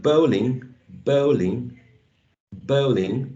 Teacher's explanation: In the word bowling, there are two sound units. The first one is the diphthong, and the second one is the short lax E.